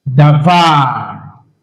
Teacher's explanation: Now, the accent on this word is on the last syllable. It is milra.